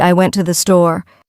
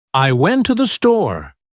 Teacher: The words to and the become so weak that they almost disappear.